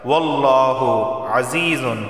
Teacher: لفظ اللہ سے پہلے زبر آیا ہے تو لفظ اللہ کو موٹا پڑھا جائے گا۔